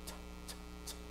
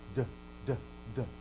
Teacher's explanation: Alveolars, unvoiced, t, t, t, tau, and then d, d, d, delta.